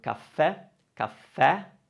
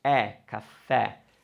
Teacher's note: spelled with an e with an accent, and that e is very open, it's e, caffè.